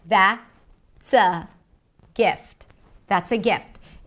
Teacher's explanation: And the pitch goes from high to low. That means I've ended the thought.